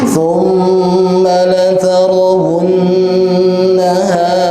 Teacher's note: ini juga ada huruf mim, ada huruf nun, dua-duanya tasydid, maka kita harus menahan bacanya